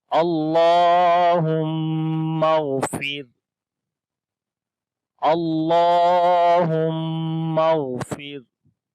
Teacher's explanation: اللہ کا نام موٹا پڑھیں گے۔ اللہ کے نام سے پہلے زبر یا پیش آئے تو اللہ کا نام موٹا پڑھا جاتا ہے اور اس کے اوپر کھڑی زبر بھی ہے، اس وجہ سے یہاں لمبا بھی کریں گے۔